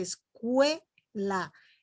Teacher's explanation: Fíjense, escuela. La E es la que está resaltando más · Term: diftongo creciente